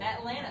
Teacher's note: It's at with the glottal stop.